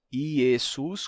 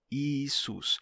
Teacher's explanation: Ainda no comecinho do cristianismo era comum pronunciar essa letra como E, mas nos primeiros séculos do cristianismo essa letra mudou, esse som de E mudou para I. Então, você pode pronunciar tanto Jesus com E, Jesus, como também Isus com I, Isus.